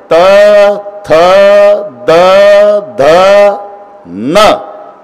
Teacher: प्रत्येक वेळेला आतून धक्का मारते ना जीभ दाताला. दाताला धक्का दिल्याशिवाय ही लाईनच होत नाही.